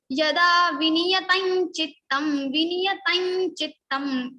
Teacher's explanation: So here we are having cha here, and nasal consonant of cha varga is nya. So nya will come in the place of Anuswara and we will say yada viniyatam chittam.